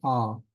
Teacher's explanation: The kametz itself is a long A, as in father, ah